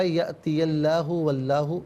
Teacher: اور میں یہاں پر یہ عرض کروں گا کہ حتی یأتی اللہ اور واللہ، یہاں پر دونوں مقامات پر جو لفظ اللہ کی لام ہے نا، اس سے پر کر کے پڑھیں گے